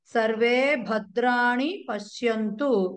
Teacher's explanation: సర్వే భా కి మాత్రమే మహాప్రాణం భద్రాణి అని మాత్రమే చదవాలి